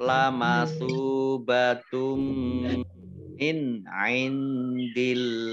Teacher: Domah tanwin bertemu dengan huruf mim bacaan idgham bi gunnah. Idgham masuk bi dengan gunnah mendengung.